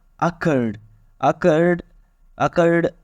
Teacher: अकर्ड last sound है उस पर दबाव हो रहा है